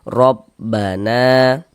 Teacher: Nah, tanda baca fathah nih, baris fathah. Maka huruf ro dibaca tebal, dibaca tafkhim. Sehingganya pangkal lisan kita naik terangkat ke atas ketika kita mengucapkannya. Tebalkan huruf rnya.